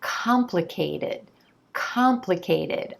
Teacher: I can see that the emphasis is on the first syllable. The first syllable is the stressed syllable, and the vowel sound at the core of this syllable is the ah as in olive.